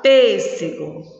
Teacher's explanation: nessas palavras a sílaba tônica é a antepenúltima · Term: proparoxítona